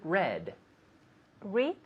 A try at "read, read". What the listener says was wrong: Yeah. Because I need to hear that D.